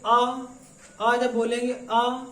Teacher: पता चलेगा कि हमारे कंठ पे प्रेशर है, यानी कि ये कंठ से निकलने वाले स्वर